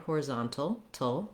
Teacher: And then at the end here, horizontal, you'll hear that we can say it with a T sound, horizontal, tul, with a little bit of a schwa. Sounds like tul with a dark L there at the end. Or American speakers will often also leave that T out and say it more like horizontal.